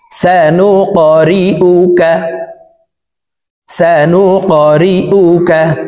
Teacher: এই কফ হরফকে উপরের দিকে ধাবিত করে ধাক্কা দিয়ে উচ্চারণ করব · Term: কলকলাহ